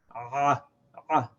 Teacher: We constrict the throat. We make the opening small, but we don't completely close it, and then we open it to say the ayn.